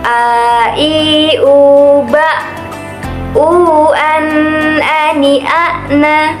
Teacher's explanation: Dalam melafalkan huruf ain ini, kita harus mengeluarkannya dari tenggorokan.